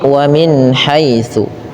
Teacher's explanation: Ya. Kemudian tsa hati-hati dalam pelafalannya jangan dibaca dengan su tapi wamin haitsu.